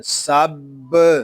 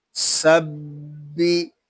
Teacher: سین با زبر سب، یہاں با مشدد ہے، اس کو جماؤ کے ساتھ ادا کریں گے